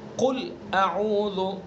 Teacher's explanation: قاف کو پر پڑھیں گے اور اس کا جو مخرج ہے وہاں سے ادا کریں گے، زبان کی جڑ اور اس کے مقابل اوپر کا تعلق. قل اعوذ، اور لام کے اوپر جو سکون ہے اس کو دھیان سے اور توجہ سے پڑھیں گے.